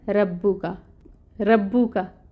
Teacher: रब्बुका के रॉ को पुर करने की बजाय बारीक पढ़ दिया जाए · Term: लहन ख़फ़ी